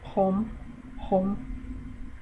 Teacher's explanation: sounds like you're clearing your throat to begin with, and sounds like an M at the end